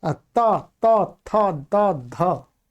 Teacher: जिह्वा है वो दांतों से टच होती है